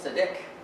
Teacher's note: This word is stressed, the last syllable, Seediq. It's only got two syllables.